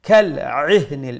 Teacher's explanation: Make sure you pronounce the ain from the middle of the throat so that it does not sound like the letter hamza.